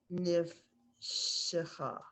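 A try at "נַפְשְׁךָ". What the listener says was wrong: Naf. So there's the a under the nun and the fe come together. Naf shecha.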